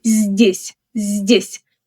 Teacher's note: Здесь has a soft Z, followed immediately by D.